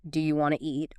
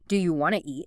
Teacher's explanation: Sometimes sounds are dropped entirely, like the T often disappears in want to.